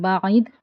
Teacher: عین کو وسط حلق سے ادا کریں گے ، بعید، دال ساکن ہے اس لیے اس پر قلقلہ ہوگا،